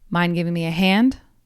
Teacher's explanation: In this case, the emphasis changes to the very last word, hand. So it's one big hop.